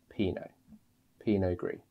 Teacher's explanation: So the T is actually silent here. It just ends in the Pinot.